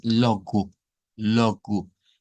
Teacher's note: de acuerdo al alfabeto fonético internacional son dos o pero seguimos la o al final que suena a u